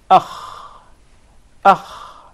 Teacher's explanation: So the articulation point is the closest part of the throat.